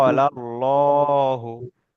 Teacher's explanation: লামের উপরে খাড়া জাবার এসেছে, খাড়া জাবার আলিফ মাদ্দার সমতুল্য, তাই খাড়া জাবারকে এক আলিফ পরিমাণ টান দিয়ে পড়তে হয়। হায়ের উপরে পেশ এসছে, পেশটি হলো হারাকাত, হারাকাতের পড়াকে তাড়াতাড়ি পড়তে হয়, টান দেওয়া নিষেধ।